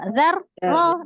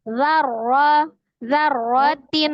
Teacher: Tawasud sifat huruf ro ditawasudkan. Jadi disambungkan, tidak terjeda.